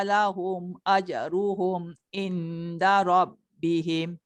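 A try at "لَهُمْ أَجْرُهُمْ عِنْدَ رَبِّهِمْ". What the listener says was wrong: Masuk ain sikit. Lahum ajruhum ain. Jadi kalau in tu dia banyak tekan nun dekat dal je. Ain tu dia tak masuk. Ain.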